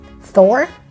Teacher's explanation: We just swallow the H and we don't pronounce it. We pretend it's not there.